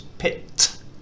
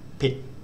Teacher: As a final consonant, it makes an unreleased T sound. And what I mean by unreleased is that if we say the English word pit, it's almost two syllables, it's pit.